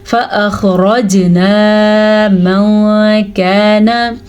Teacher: इस खौ को हम पुर पढ़ेंगे क्योंकि खौ हरूफ मुस्तालिया में से है। रॉ को हम पुर पढ़ेंगे क्योंकि रॉ के ऊपर ज़बर है, रॉ हरूफ मुस्तालिया में से नहीं है।